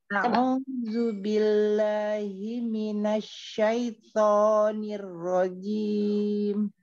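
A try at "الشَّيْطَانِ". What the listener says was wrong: Syaito gak maju Umi. Syaito. Ya, yang bikin dia seperti O karena dia membuka mulutnya. Ya, yang bergerak adalah lidah belakang.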